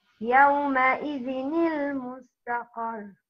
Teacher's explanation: If the تنوين is followed by همزة وصف, the reader is supposed to pronounce the noon in the تنوين like noon with كسرة